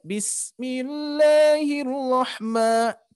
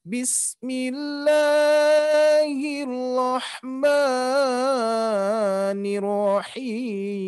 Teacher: khususnya yang pertama adalah terlalu panjang membaca Mad dua harokat ya harusnya dibaca panjang dua harakat